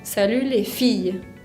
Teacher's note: pongo el acento tónico sobre la I de fille. No la pongo sobre la E final, sino que sobre la I, salut les filles.